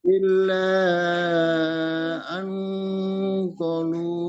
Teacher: illa an qalu Qaf itu mat tobi'i yang tadi malam kita belajar itu. Ada qaf harokatnya fathah di depannya alif. Berarti qaf dibaca panjang 2 harokat.